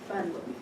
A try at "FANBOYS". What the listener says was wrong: Fanboys. Fanboys, not fun boys. Fanboys.